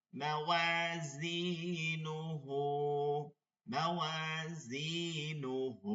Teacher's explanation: উল্টা পেশ হা, উল্টা পেশ, মাদের হরকত এক আলিফ টেনে পড়তে হবে